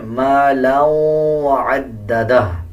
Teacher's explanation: آگے دیکھیں مالا وعددہ، دو زبر دو زیر یا دو پیش کے بعد واو شد والا آ رہا ہو تو غنہ کیا جاتا ہے اور غننے کی آواز کو ناک سے نکالا جاتا ہے